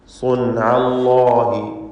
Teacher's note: അല്ലാഹ് എന്ന ഇസ്മുൽ ജലാല നേരത്തെ സൂചിപ്പിച്ച പോലെ തഫ്ഖീം ചെയ്ത് ലാമിനെ തടിപ്പിച്ച് ഉച്ചരിക്കണം.